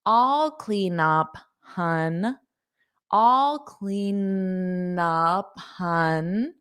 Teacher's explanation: notice that n, it carries over clean up